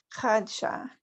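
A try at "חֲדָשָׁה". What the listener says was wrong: There's a vowel under Dalid. Let his sound ring out. Hadasha.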